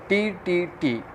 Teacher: where did the tip of the tongue touch? So your answer will be alveolar ridge